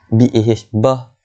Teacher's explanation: Artinya lahu kita kena panjang 2 harakat mat silah qasirah, sahibah. Okey, bah bila berhenti kat ta tu dia akan jadi bah